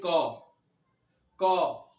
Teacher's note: आप खुद उच्चारण कीजिए, बोलिए क। आपके गले से आवाज आ रहा है, जब डायरेक्टली आपके गले से आवाज निकले तो उसे हम कहते हैं कंठ